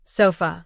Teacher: the most common sound in American English. It's weak, quick, and found in unstressed syllables.